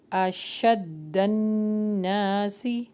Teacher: نون کے اوپر شد آ رہا ہے تو اس میں غنہ ہوگا